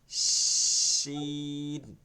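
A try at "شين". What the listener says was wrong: সিনের ধাস থাকে আপনার উচ্চারণের মধ্যে, শিন করতে হবে, শিন। ওইটা এখানে দেখেন, আপনি উচ্চারণের সময় দেখেন জিহ্বাটা ঈর্ষার নিচের দাঁতে লাগতেছে, এর জন্য একটু সিনের ভাব থাকে।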